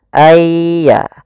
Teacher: masukkan nunnya kepada ya Sehingga nunnya hilang tinggal ynya ayya langsung ditasdidkan dia seakan-akan ynya duait Ya Sukun dan ya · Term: idgham bi gunnah